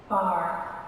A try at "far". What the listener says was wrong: In the Arabic one we say far. Because our tongue is used to this place. The Arabic R, the tip of my tongue comes to the end of my mouth and touches the palate.